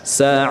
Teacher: Huruf yang berharokat kasrah apabila diberhentikan atau diwaqafkan maka disukun. Nah, sekarang ra sukun yang huruf sebelumnya adalah berupa ya sukun, maka ra sukun itu dibaca tipis.